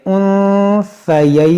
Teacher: تو پھر للذکر مثل حظ الانثیین۔ یہاں پر آپ کیا دیکھیں، نون ساکن کے بعد سا ہے تو یہاں پر اخفا کریں گے